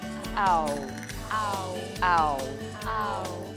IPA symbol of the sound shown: aʊ